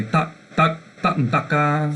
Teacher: this tak where it ends with a K, that's called an entering tone, or Rusheng.